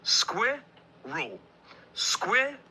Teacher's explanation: It's a 2-syllable word. Squirrel. Squirrel. The stress is on the first syllable.